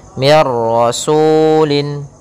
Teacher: nun sukun bertemu dengan ro maka suara nunnya langsung hilang langsung kepada huruf ra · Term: idgham bila gunnah